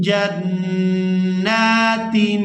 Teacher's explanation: नून मुशद्दद पर गुना करेंगे और नून को खड़ी ज़बर की वजह से खींचकर अदा करेंगे